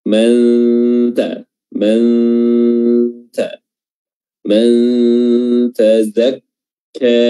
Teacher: Dan selanjutnya nun mati ketemu dengan huruf ta, hukumnya ikhfa hakiki ya. Makhraj atau posisi lidah telah kita letakkan di huruf setelahnya, yaitu huruf ta ketika melafazkan nun